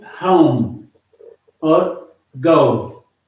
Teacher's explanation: This is ow sound, a plus oo, but as one sound it is o, as in home or go. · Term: diphthongs